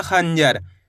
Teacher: इसलिए इसे अपन अनुस्वार की मात्रा बोल के पढ़ेंगे। और अनुस्वार की मात्रा इसलिए बोलते हैं। इसका उच्चारण नाक से निकलता है।